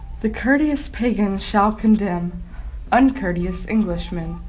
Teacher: a metrical foot consisting of two lightly emphasized syllables is followed by one heavily emphasized syllable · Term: anapestic poetry